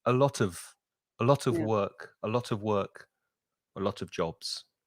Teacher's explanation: the of almost disappears you don't really hear it because it's weak